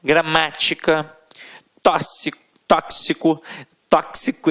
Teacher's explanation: com mais força sempre esteve na penúltima eu já deixo proparoxítonas a gente já sabe que a sílaba tônica estará na antepenúltima sílaba